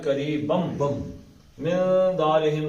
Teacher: تو نون پڑھنا ہے تنوین کا نہیں پڑھنا, سیدھا میم میں چلا جائے گا